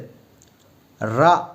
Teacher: நாவின் நுனி மேல் அன்னத்தின் முதல் பகுதியை தொடும்போது ரா அப்படிங்கிறது தொடுது, ரா அப்படிங்கிறது உச்சரிக்கிறோம்.